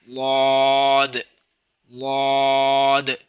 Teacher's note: چوتھا حرف واد ہے، واد یہ موٹا بھی ہے نرم بھی ہے، اور جماؤں کے ساتھ منہ کی جو پیچھے والا حصہ ہے، کروٹ جس کو کروٹ کہتے ہیں زبان کی، یعنی وہ جو موٹا زبان کا حصہ جو داڑوں کے سامنے آتا ہے وہاں سے ادا ہوتا ہے، لاد لاد۔ اس کو زوا کے مخرج سے یعنی سامنے سے ادا نہیں کرنا بلکہ پیچھے سے ادا کرنا ہے، زبان کا جو پیچھے والا حصہ ہے، موٹا حصہ ہے، لاد لاد۔